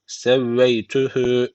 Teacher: Hü burada bir elif uzatıyor. Öncesindeki harf harekeliydi.